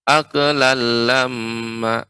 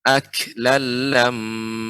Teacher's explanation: pengucapan kaf dia harus menutup dahulu kemudian baru dibuka. Ak, tidak boleh atau tidak boleh juga memantul.